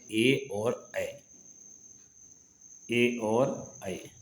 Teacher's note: 2 स्वर कंठ और तालु में जीभ के स्पर्श से बोले जाते हैं